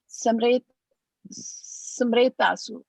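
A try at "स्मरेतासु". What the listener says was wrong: No, not some. It is not some. Sma. Sma. Sma. Smaretasu. Smaretasu. Smaretasu. Smaretasu.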